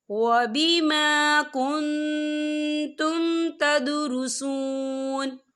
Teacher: نون ساکن کی آواز کو ناک میں چھپائیں گے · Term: اکفا